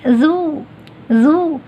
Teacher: یہ زال ہے نا، لائٹ پڑھنا ہے آپ کو، استفال ہے اس میں، ذو، ذو. اب ذو، ذو میں اگر میرے آخری حصے، زبان کے آخری حصے کو اٹھاتی ہوں تو پھر ذو جیسے سنائی دے سکتا ہے.